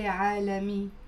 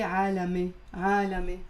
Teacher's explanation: The letter ya here we're pronouncing it as a e. So in standard Arabic they would say عالمي.